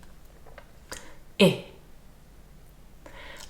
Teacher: the /ɪ/ sound is of course much shorter but it's not just shorter it's also a different mouth shape in that the inside of the mouth is much more relaxed